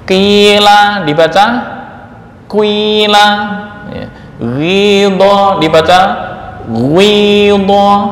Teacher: Bil harakah, mencampurkan harokat kasroh pada huruf pertama dengan dhammah, dengan cara membaca harokat dhammah terlebih dahulu sepertiga harokat pada huruf pertama, kemudian baru menyempurnakan membaca kasroh 2/3 harokat. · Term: ismamul harakah